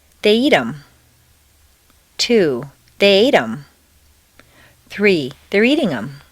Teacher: in fluent speech the th of them is frequently dropped